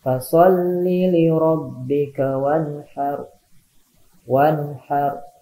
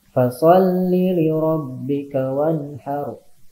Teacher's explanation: nun mati menghadapi huruf ha. Hukum tajwidnya izhar ya. Jadi dibacanya tidak berdengung atau tidak ditahan ya.